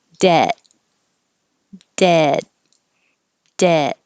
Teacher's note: It should sound the same because you're not hearing a D or a T at the end.